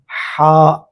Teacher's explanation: حا اور عین یہ دونوں کا مخرج ایک ہے، درمیان حلق۔ یہ جو درمیان حلق ہے، اس سے حا اور عین ادا ہوتے ہیں۔